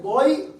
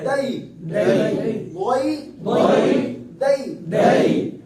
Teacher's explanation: یا ساکن پیچھے زبر ہے, حرف لین, تو اس سے بھی معروف پڑھیں گے, آواز لمبی نہیں کریں گے. حرف لین ہے, حرف مدہ ہوتا تو پھر ایک الف آواز کرتے.